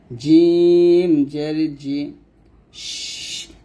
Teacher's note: তো এখানে দেখুন জিম শিন ইয়া, এই 3টা হরফ আমরা জিহ্বার মধ্যখান তার বরাবর উপরে তার সঙ্গে লাগিয়ে উচ্চারণ করব। তো জিমটা জিহ্বার মধ্যখান তার বরাবর উপরে তার সঙ্গে লাগবে